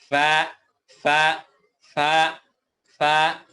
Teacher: নিচের ঠোঁটের পেট মানে ঠোঁটের মিডেল সাইড সামনের উপরের দুই দাঁত এর আগার সঙ্গে লাগিয়ে ফা উচ্চারিত হয়